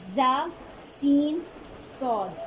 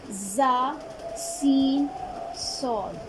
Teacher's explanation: ان کی ادائیگی میں سختی اور سیٹی کی آواز لازمی آئے گی، سختی سے ادا ہوں گے